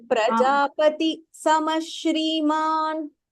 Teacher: You're still saying Prajapati Shamash. You're saying an extra sakaraha. There is no visargaha between Prajapati and Sama.